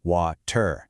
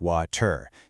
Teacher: using this really quick sound called a flap, which is written like that little hook symbol on the slide.